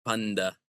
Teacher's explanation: But the Greeks don't say panta because when that N starts vibrating your vocal cords, it's going to change the pronunciation of the T to sound more like D. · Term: allophone D